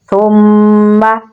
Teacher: فا کو نرمی سے پڑھیں گے اور میم کے ساتھ ملائیں گے کیونکہ میم کے اوپر تشدید ہے تو یہاں پر غنہ ہو رہا ہے، تو پڑھیں گے ثم۔